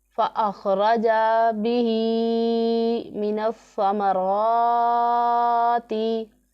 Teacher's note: را کے اوپر زبر ہے تو را کو پر پڑھیں گے · تو فا حرف مستفلہ میں سے ہے، یہ باریک پڑھا جائے گا، اور ہا کو ہم لمبا کریں گے، اس کے نیچے کھڑا زیر ہے۔ سا کی آواز سیٹی کی نہیں نکالیں گے سا میں، را کو لمبا کریں گے کیونکہ اس کے اوپر کھڑا زبر ہے۔